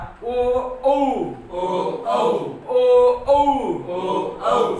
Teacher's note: कंठ आणि ओठ एकत्र येऊन जे तयार होतात त्यांना म्हणतात कंठोष्ठ